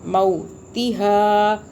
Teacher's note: मीम के बाद वाव साकिन आ रहा है तो ये लीन हो रहा है